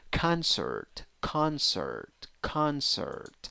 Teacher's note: you have e when you write it but you have uh when you pronounce it in the second syllable · you have o when you write it you have ah when you pronounce it